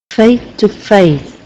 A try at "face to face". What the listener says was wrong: it's just the S sounds the ending sounds